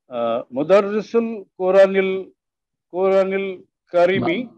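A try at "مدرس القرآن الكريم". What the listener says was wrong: মাদ দিয়ে পড়েন, যেখানে যেখানে মাদ আছে প্রপার মাদ দেন।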